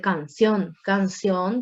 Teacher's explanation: Canción que tiene mayor carga de voz en la última sílaba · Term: palabra aguda